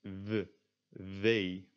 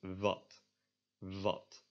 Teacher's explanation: In Dutch, the W is pronounced a lot more similar to a V, and it's pronounced like v, v.